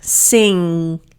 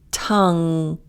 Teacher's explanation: So this one, it's not ing. Hold that G in your throat. Sing. You're closing your throat for that sound. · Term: the ing sound